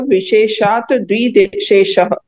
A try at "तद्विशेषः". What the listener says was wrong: तद विशेष, विधि द्रव्य धातु पात्र विशेषा तद विशेषा। तद विशेषा, द जो है ना इसका उच्चारण पहले होगा त के साथ, तद हाँ, और ये वी है तो विशेष है ना। विधि, विधि प्लस द्रव्य प्लस धातु प्लस पात्र, सरली है इसका। विशेषात, फिर यहाँ संधि विग्रह हो गया, तत्, और फिर विशेष।